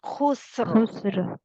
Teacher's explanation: सीन की आवाज भी बीच में आनी चाहिए और सीन को बारीक रखना है